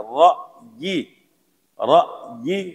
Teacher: حمزہ کو بھی ظاہر کرنا ہے، را کو بھی پر پڑھنا ہے. را حمزہ زبر را، یا زیر یہ، حرکات کو نہیں کہنا.